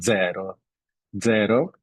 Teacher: when it starts the word it's generally pronounced like a combination of D and Z